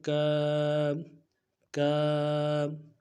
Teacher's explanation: اگلا لفظ جو ہے کاف الف زبر کاف، الف مدہ ہے اور لفظ کاف کو باریک پڑھیں گے، بالکل نرمی سے پڑھیں گے، الف مدہ کو ایک الف مقدار میں کھینچیں گے